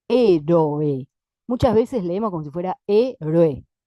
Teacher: Como si fuera una sola sílaba, como si hubiera un diptongo entre la O y la E. Gramaticalmente no lo hay, pero a veces métricamente suena así.